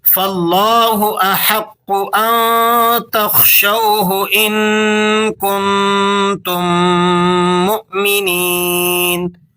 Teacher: تو میم ساکن کے بعد جب دوسرا میم آ جائے تو دونوں میم آپس میں مل کر ایک لمبے سے میم کی آواز پیدا کریں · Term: ادغام شفوی